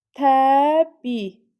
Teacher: i düşür, i uzanır. Beş hərf, dörd səs var. · Təbii sözündə təbii, yəni i düşür, i uzanır. 5 hərf 4 səs var, düz deyir.